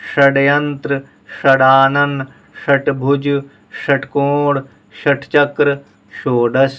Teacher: मूर्धन्य सा के लिए हम जुबान को और ऊपर ले आएंगे, थोड़ा सा मोड़ते हुए। षड्यंत्र, षडानन, षटभुज, षटकोण, षटचक्र, षोडश, इस तरह से बोलेंगे।